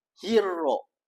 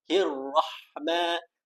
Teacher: Hirrah guna lidah dan lelangit mulut sahaja.